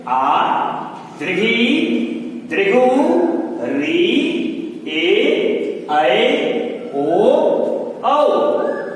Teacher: जिनके उच्चारण में 2 मात्रा के बराबर का समय लगता है वे दीर्घ स्वर कहलाते हैं।